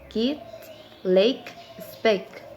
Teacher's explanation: this is a stop, voiceless